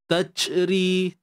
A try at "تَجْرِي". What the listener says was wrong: Nah, dia bukan touch, tapi taj. Yang mana ia melibatkan pegangan makhraj lah. Okay, untuk menghasilkan bunyi yang baik pada jim ni, pastikan kita punya bahagian tengah lidah, tuan-tuan. Ni lidah kita, tengah ni. Tengah-tengah lidah. Ni hujung, ni pangkal. Tengah ni akan naik ke bahagian lelangit.